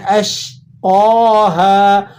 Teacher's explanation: قوف پہ کھڑا زبر ہے، اسے ایک الف تک کھینچ لیں گے۔ ہا کے بعد الف ہے تو الف ساکن اور اس کے بعد الف سے پہلے جو ہے حرف پر زبر ہو تو یہ الف مدہ کا ایگزامپل ہوتا ہے، اسے بھی آپ نے ایک الف تک کھینچ لینا ہے۔